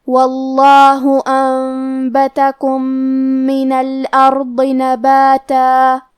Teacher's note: ضاد کی ادائیگی زبان کے کروٹ اور اوپر کے داڑھوں کے جڑ سے ہے. حرف الضاد حروف تفخیم میں سے ہے تو ہمیں یہ حرف کو بھاری آواز میں اور منہ پھلا کے پڑھنا ہے